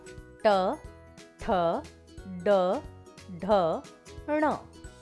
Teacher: ट वर्ग के व्यंजन मूर्धन्य कहलाते हैं, क्योंकि इनको बोलते समय जीभ का आगे का भाग तालू को स्पर्श करता है